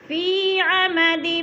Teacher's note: فی عمد، فی یا مدہ یا ساکن سے پہلے فا کے نیچے زیر ہے تو یا مدہ ایک الف کے برابر لمبا کر کے پڑھنا ہے